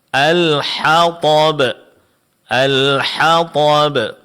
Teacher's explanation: yang terakhir huruf yang ditebalkan adalah huruf th